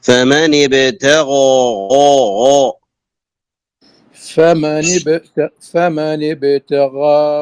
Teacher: تفخيم الغين المفتوحة التي بعدها ألف